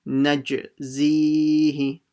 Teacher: notice how I read the Jeem with a echo sound